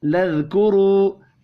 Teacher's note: रॉ को पेश की वजह से पुर पढ़ना